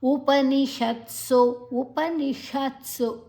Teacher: ಉಪನಿಷತ್ಸು ಉಪನಿಷತ್ಸು ಉಪನಿ ಆದ ನಂತರ ಶ ಷಣ್ಮುಖ ಶಾವನ್ನು ನಾಲಿಗೆಯನ್ನು ಮಡಚಿ ಹೇಳ್ತೇವೆ, ಮೂರ್ಧನ್ಯ ಶ ಅಂತ ಕೂಡ ಹೇಳ್ತೇವೆ